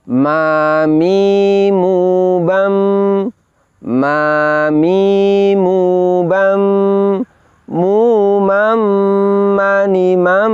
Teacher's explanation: tapi mengalir keluar melalui pangkal hidung atau yang disebut dengan al-khaisyum suara yang keluar melalui pangkal hidung Inilah yang disebut dengan sifat hunah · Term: dengung